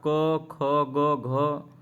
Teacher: क ख ग घ का कंठ से उच्चारण होता है